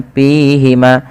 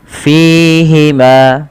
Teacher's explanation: padah Fi Fa memiliki salah satu sifat-sifat hams yang di mana Ketika melafalkannya Harus mengalirkan nafasnya dan teman-teman tidak boleh menggunakan huruf P